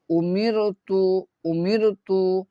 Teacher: کیا کریں گے، باریک، کیونکہ باریک را سے پہلے، رائے ساکنہ سے پہلے اگر زیر ہو، رائے ساکنہ سے پہلے اگر زیر ہو، رائے ساکنہ سے پہلے اگر زیر ہو تو اس کو ہم لوگ کیا کر کے پڑھیں گے، باریک کر کے پڑھیں گے